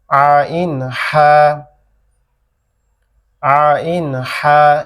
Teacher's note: গলার আওয়াজকে কি চিকন করতে হবে, সংকুচিত করতে হবে, করে গলা চেপে বলতে হবে